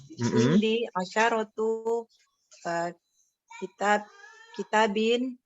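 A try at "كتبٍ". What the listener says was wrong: Masa kitab itu? Itu taknya pendek loh.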